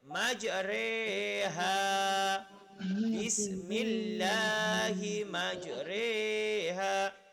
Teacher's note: Dia ada tanda diamond kecil dekat bawah. Lepas tu, bacaan imalah ini antara baris atas dan bawah. Jadi dia bertengahan.